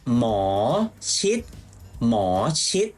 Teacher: you have to say it with a rising tone for more, not more, okay?